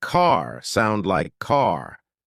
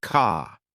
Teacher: American accent often uses a strong R sound. Words like car sound like car. British accent tends to soften the R, so car sounds more like car.